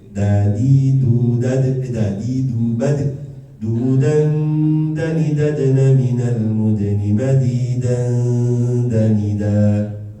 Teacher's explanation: Ini juga sama, nunnya disengaukan karena ini dekat juga dengan bunyi huruf nun ya, dal ini ya, sehingga ya nunnya akan dihilangkan dengan cara menggantinya dengan suara gunnah dengan apa keluarnya lewat khishum